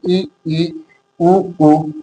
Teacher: इनको उच्चारण करने पर हमारा मुख है वो न के बराबर खुलता है, यानी लगभग बंद ही रहता है। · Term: संवृत स्वर